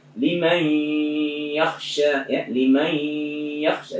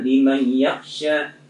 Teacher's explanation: Nun mati bertemu ya idgham bi gunna.